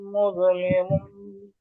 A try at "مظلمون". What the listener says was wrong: জ কলকলা হয়ে যায়, মুযলিমুন,